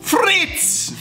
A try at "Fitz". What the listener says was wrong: No, there's no R.